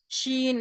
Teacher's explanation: شین زبان کے بیچ کے حصے کے اوپر کے تالو میں لگانے سے